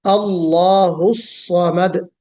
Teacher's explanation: پڑھا ہے اس کو اسی مخرج سے نکالنے کی کوشش کریں، صاد حرف استعلا بھی ہے، موٹا بھی پڑھا جائے گا